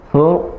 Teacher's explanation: Karena ra-nya diwaqaf dan maka disukunkan, ra disukunkan, dan sebelumnya harokatnya dhammah, maka hurufnya tafkhim atau mufakham, ya, tebal.